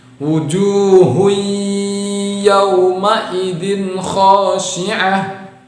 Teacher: Yauma izin, zin ketemu dengan kha itu juga jelas. Itu izhar. Wujuhun yauma idin khashi'ah, ya.